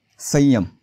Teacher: अनुस्वाराच्या समोर य आलाय म्हणून इथे अनुनासिक य चा उच्चार करायचा आहे